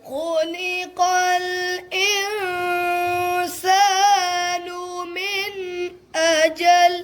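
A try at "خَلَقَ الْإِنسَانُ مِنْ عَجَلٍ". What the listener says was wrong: اچھا بچو اجل یہ حمزہ کی آواز نہ بنے کیونکہ اجل کا حمزہ کے ساتھ ہو تو اس کا معنی ہوتا ہے مقرر وقت.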